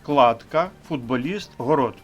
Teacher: звук ту перед наступним дзвінким б сам стає дзвінким д